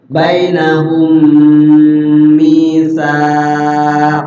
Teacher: idgham, ditahan di mim yang kedua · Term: Idgham mimi